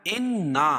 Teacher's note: انا نون مشدد ہے، غنہ ہوگا